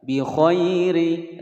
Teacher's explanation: ri ra berharokat kasratain, dibaca tipis.